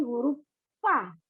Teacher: keluar dari bibir bawah yang dihimpit sedikit renggang ke gigi atas